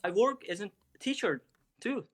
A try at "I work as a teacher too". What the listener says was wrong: Okay, bit staccato too. I work as a teacher too, just a little bit, but okay.